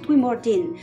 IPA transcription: dwimordin